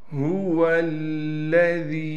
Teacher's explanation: هُوَ الَّذِي، واو کو لام سے ملائیں گے، تشدید ہونے کی وجہ سے لام پر تھوڑا ٹھہراؤ کریں گے، ذال کو باریک کر کے پڑھنا ہے، ذال کے بعد یا مدہ ہونے کی وجہ سے ذال کو ایک الف کی مقدار کھینچیں گے